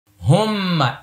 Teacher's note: আল্লাহুম্মা, মোটা হবে, এক আলিফ টান হবে, হুম্মা গুন্না হবে।